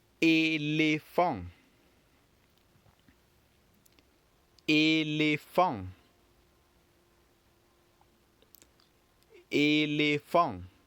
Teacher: elephant when pronounced of course will not have the T at the end being pronounced